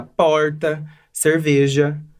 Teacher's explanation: reproduz o chamado Retroflexo, que é um TEP com uma retroflexão da língua. Então a nossa pronúncia fica porta, cerveja. · Pra gente, aqui no interior de São Paulo, a gente não tem essa dificuldade porque a gente reproduz o chamado R retroflexo, que é um TEP com uma retroflexão da língua.